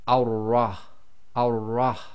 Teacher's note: So we read the Hamza-tul-Wasl as if it's got a fatha, but because we've now got the shadda on top of the ra, the shadda has to join to a sound before it. So we're going to effectively completely skip the lam. So we're going to join the fatha, which is going to be on top of the wasla, and join that to the ra.